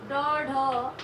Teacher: जीभ की नोक को उलट कर कठोर तालु को झटके के साथ कुछ दूर तक छूकर किया जाता है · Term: उच्चित व्यंजन